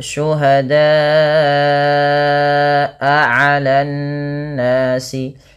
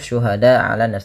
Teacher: Kemudian pada lafal syuhada'a 'alan nasi, pada lafal da panjangkan bunyi suara huruf da sepanjang 4 atau 5 harakat karena ia termasuk daripada bacaan mad wajib muttasil, dan dia tidak boleh kurang, tidak hanya cukup syuhada ala nas, tapi dia wajib 4 atau 5 harakat.